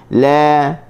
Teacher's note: La huruf lam, hujung tepi lidah kita letak di gusi. La huruf ringan, buka mulut sambil nak senyum.